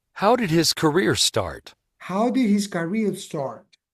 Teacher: la entonación es para abajo al final